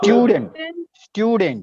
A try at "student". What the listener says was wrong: Here, in the word student, actually it is not student. It's not student. It is stew. Your sound is there. Student. Here, as stew gets the stress, the next vowel becomes V. That is why it is not dent, it is dunt. It becomes dunt. We don't say student.